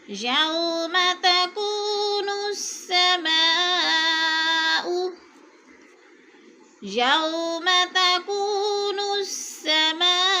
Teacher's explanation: یو کی واو کو لمبا نہیں کریں گے، وہ لین ہے ، تو کو تھوڑا سا کھینچیں گے، وہ مدہ ہے، السماء